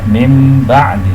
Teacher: Mim ba'di, tulisannya min ba'di, dibacanya mim ba'di. Nun sukun dibalikkan menjadi huruf mim. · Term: iqlab